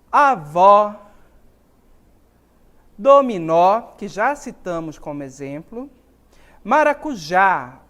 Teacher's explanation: citamos como exemplo maracujá observa em todas essas palavras a sílaba a sílaba tônica está no final por isso elas são acentuadas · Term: oxítonas